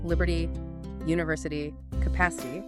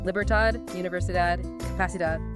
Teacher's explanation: t dropping to a d is just the vocal cords vibrating slightly differently while the tongue is in the exact same spot behind the teeth